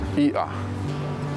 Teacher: That's a glottal stop, or okina.